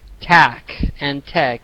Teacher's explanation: sometimes I didn't hear any R. So I heard maybe tack and tech.